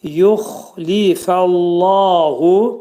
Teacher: Xa hərfi qalın hərfdir. Xa hərfinin məxrəci boğazın yuxarısından çıxarılır.